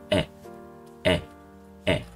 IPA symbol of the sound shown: ɛ